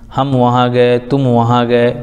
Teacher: میم ساکن کے بعد میم کے علاوہ با اور میم کے علاوہ کوئی اور حرف بالخصوص واو یا فا آئے تو میم کو ظاہر کر کے پڑھنا چاہیے، جیسے اردو میں ہم تم کی میم، ہم وہاں گئے تم وہاں گئے، میم میں ہم کھینچتے نہیں، جلدی سے پڑھ کے گزر جاتے ہیں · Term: اظہار شفوی